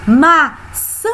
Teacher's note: o an é a sílaba mais forte